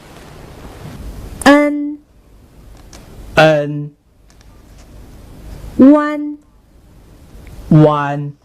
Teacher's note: The sound N is a tip tongue nasal final.